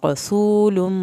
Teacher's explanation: रवा को पुर करें, सीन को सीटी के आवाज़ के साथ पढ़ें, वाव साकिन को खींचें। यहाँ पर जब लुम होगा मीम की शद पे एक अलिफ के बराबर देर लगेगी।